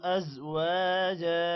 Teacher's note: ازواجا، واو کے بعد الف ہے، لمبا کریں گے، جا کو بھی لمبا کرنا ہے